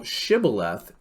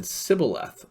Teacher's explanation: The Ephraimites could not pronounce Sibboleth or Shibboleth. They couldn't say sh, so they just say s